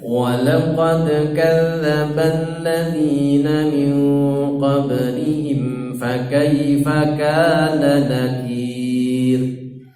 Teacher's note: Dalnya mantul, kemudian qablihim baknya mantul